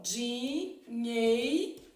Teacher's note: tá o Ei que a gente chama de ditongo no caso o e é a vogal e o i é a semivogal